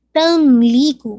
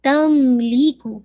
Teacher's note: मीम पे नाकस गुन्ना है